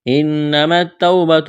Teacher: نون مشدد ہے، آواز ناک میں چھپائیں گے، غنہ کریں گے